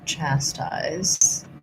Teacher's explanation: for chastise, we have first syllable stress